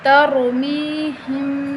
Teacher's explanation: را کو موٹا پڑھیں اور میم پر غنہ کریں۔